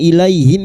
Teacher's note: Ilai fathah bertemu ya sukun kita lunakkan huruf lin.